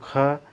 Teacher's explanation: ऊष्म संघर्षी है, कंठ इसका उच्चारण स्थान है दोस्तों, जिह्वा मूल